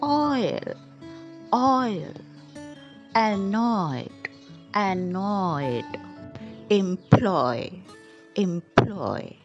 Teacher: this is a two vowel sound joined together and made a new syllable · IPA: /ɔɪ/